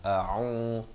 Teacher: Pastikan jangan sampai tertukar hamzah dan ainnya. A'u, a di pangkal kerongkong, ain di pertengahan kerongkong, 2 harakat.